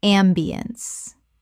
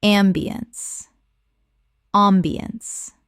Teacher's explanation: ambiance Three syllables with the stress on the first. The ence collapses to uns.